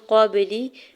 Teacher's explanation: قاف کے زبر کو با ساکن کے ساتھ ملاتے ہوئے با ساکن پہ قلقلہ کریں گے